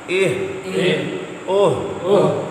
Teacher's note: حلق سے نیچے والا، نچلے حصے سے ادا ہونے والا ہا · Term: گول ہا